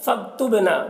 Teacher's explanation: فاکتبنا با میں قلقلہ ہوگا، با حروف قلقلہ میں سے ہے